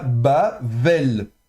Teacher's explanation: Il y a pas de dagège dans le bê donc elle est fricative. Donc on va prononcer le bê comme un V en fait un V.